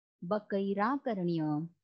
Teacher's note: यावर बकैही आकर्ण्य हे उत्तर ऐकून, इथे संधी आहे, बकैही अधिक आकर्ण्य, विसर्गाचा र झाला आणि पुढच्या आ मध्ये तो मिसळून रा पूर्ण झाला